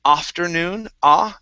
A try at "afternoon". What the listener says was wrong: stress at the very end.